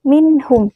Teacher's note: huruf H adalah huruf Idhar maka harus dibaca jelas minhum Bukan dibaca berdengung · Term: Izhar